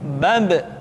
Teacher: Ketika mati, maka terdengar suara pantulan.